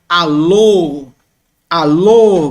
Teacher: como um som mais fechado e longo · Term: Ómega